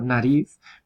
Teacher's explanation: a continuación tenemos la alveolar que es el prototipo estándar de n